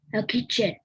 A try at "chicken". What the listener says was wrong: Chicken. Okay, not kitchen. Chicken. Can you say that?